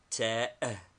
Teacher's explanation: a soft dental t like the Italian